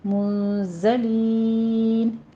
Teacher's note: منزلین، نون ساکن کا قاعدہ اخفا کی کریں گے اور پھر زائے کی آواز کو سیٹی کی آواز سے قوی آواز سے پڑھیں گے